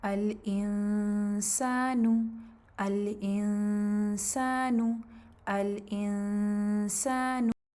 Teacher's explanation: جب نون سکون اور تنوین کے بعد سین کا حرف آئے تب بھی آپ یہی کریں گے کہ آپ نے مخرج کو ٹچ کرنا ہے اخفاء کے دوران، اور جیسے ہی اخفاء ختم ہو بس ساتھ ہی ہلکا سا مزید پریس کر کے پھر سین کو ادا کریں گے